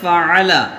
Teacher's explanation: فا کا مخرج جو ہے اوپر کے دانتوں کا کنارہ نیچے کے ہونٹ سے لگا کر جو ہے فا ادا ہوتا ہے